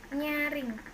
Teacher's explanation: kriterianya bunyi lamino palatal nasal bersuara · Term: konsonan nya